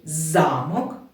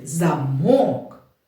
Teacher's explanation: слово замок наголос цей на перший голосний а в другому слові замок наголос стоїть на звук о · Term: варіативний наголос